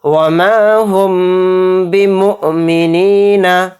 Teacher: मीम साकिन के बाद बा आ रहा है तो इसमें इख्फ़ाए शफवी का कायदा हो रहा है और इसमें गुन्ने के साथ हम इख्फ़ा करेंगे